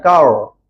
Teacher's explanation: Cara nak sebut ra tebal, masa kita sebut kar tadi, lidah kita ke belakang.